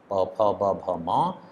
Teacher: पवर्ग के जो 5 अक्षर हैं, 5 वर्ण हैं प फ ब भ म, वे ओष्ठ्य वर्ण कहलाते हैं। क्यों? क्योंकि उनका उच्चारण ओठ से होता है।